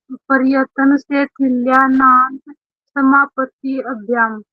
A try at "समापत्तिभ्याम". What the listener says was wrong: समापत्ति अभ्याम नहीं बोलेंगे, समापत्ति भ्याम, स्किप हो जाएगा।